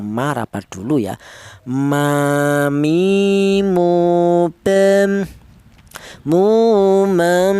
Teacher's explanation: mim keluarnya huruf berasal dari kedua bibir yang rapat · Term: huruf mim